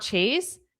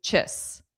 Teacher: it's not chase, it's chis because it's unstressed